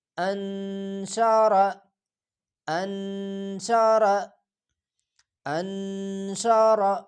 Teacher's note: اس را کو پور کر کے موٹا کر کے پڑھا جائے گا